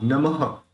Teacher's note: नमस्ते जगतांपत्ये लक्ष्मी भर्त्रे नमो नमः। देखिए यहाँ पे जो विसर्ग है उसका ह निकलेगा, लेकिन वो ह इस तरह से क्लियर सुनाई देना चाहिए कि उसको क्लियर सुनाई देना चाहिए विसर्ग को, नमः।